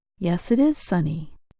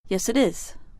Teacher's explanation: we sometimes say the words with no break the sounds blend together